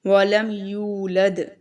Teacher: اب یہاں پر دیکھیں یو میں جو ہے واو مدہ ہے. ٹھیک ہے، واو ساکن سے پہلے پیش ہے تو اس کو ہم تھوڑا لمبا کریں گے